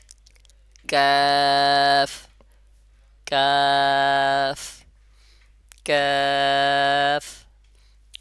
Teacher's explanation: জিহ্বার গোড়াকে শক্ত ও নরম যে তালু আছে তার সাথে লাগাইয়া কাফ এর উচ্চারণ করবেন